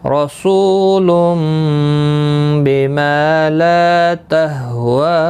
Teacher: واو مدہ، الف مدہ اور یا مدہ تینوں کو ایک ایک الف کے برابر کھینچ کر پڑھتے ہیں